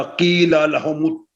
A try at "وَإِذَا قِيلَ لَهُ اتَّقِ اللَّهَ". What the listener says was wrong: کی نہیں قاف بڑا ہے وَإِذَا قِيلَ لَهُ اتَّقِ اللَّهَ